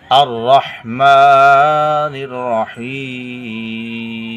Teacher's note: রাহ আর রাহ আর রহমানির রহিম এখানে দুইটা জায়গায় হা আছে বড় হা স্পষ্টভাবে কণ্ঠনালীর মধ্যে থেকে তা উচ্চারণ করতে হইব